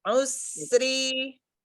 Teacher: Coba sekarang usri bunyi s-nya itu di gigi depan itu. Jangan di tengah-tengah. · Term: sofirnya